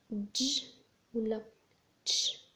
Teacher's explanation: الافريكيتس هما الاصوات اللي كنجوهم اللي كنحبسوا مجرى الهواء وكنطلقوه ولكن ماشي بشكل كامل، نقدر نستمر فيه حتى يسالي الهواء